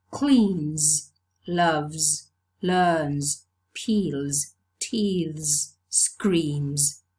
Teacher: voiced sound because the previous sound is a voiced non sibilant sound